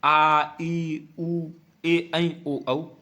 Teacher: उच्चारण करने पर ह्रस्व स्वरों की अपेक्षा थोड़ा अधिक समय लगेगा, क्योंकि यहाँ पे एक मात्रा का लग रहा था, यहाँ पे 2 मात्राओं का लग रहा, इसलिए इसका उच्चारण ह्रस्व स्वरों की अपेक्षा थोड़ा सा ज्यादा समय लगेगा। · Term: द्विमात्रिक स्वर